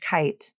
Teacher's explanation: the lips are open and neutral. The tongue pulls back and touches the soft palate. Then the tongue drops down and the air is released. Since the lips don't participate in the K or G consonants, it is common for the lips to take the shape of whatever sound comes next. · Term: K sound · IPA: /k/